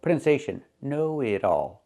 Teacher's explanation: The t changes to a fast d because it's between vowels. Not know it all, but know it all.